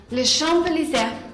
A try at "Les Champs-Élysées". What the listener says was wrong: Si, no se pronuncia la P. Les Champs-Élysées. Les Champs-Élysées.